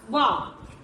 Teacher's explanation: वा से वकार, अस्य दंतोष्ठ ध्वनि। तो जब हम वा बोलेंगे तो हमारे दांत भी और होंठ भी आपस में मिलते हैं, तो इसे कहते हैं दंतोष्ठ। तो वा हो जाएगा हमारा दंतोष्ठ वर्ण।